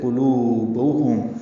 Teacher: قاف پر لو واو مدہ، دو حرکات لمبا ہے. با کو جلدی اور معروف پڑھیں گے.